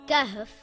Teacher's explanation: Kaf is a light letter and should not be pronounced heavy. Kaf makes a similar sound in English to the letter K in the word kitten or the word kangaroo.